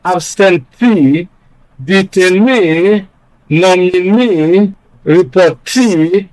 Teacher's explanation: they are stressed on the first syllable from the end, that is the last syllable of the word. Examples: absentee, detainee, nominee, reportee, and so on.